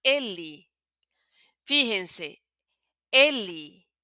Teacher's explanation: la última E la vamos a pronunciar como una I. No una I fuerte, sino una I suave